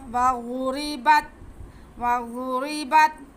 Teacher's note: لکم ما سألتم، لکم ما سألتم مصرا فإن لکم ما سألتم وضربت، واو پہ زبر، غاد پہ پیش، را کے نیچے زیر، اس لیے را باریک پڑھا جائے گا